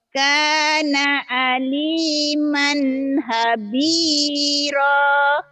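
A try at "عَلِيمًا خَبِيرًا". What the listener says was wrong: Habiron ho-nya jadi ha, hanya jadi ho ketuker-tuker nih ya. Kana aliman khabiran.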